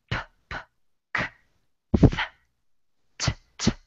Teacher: So again, if you put your hand here and you say p, p, k, th, t, t, you won't feel vibration because you're not using your vocal cords to make these sounds. It's just air coming through, no vocal sounds. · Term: unvoiced consonants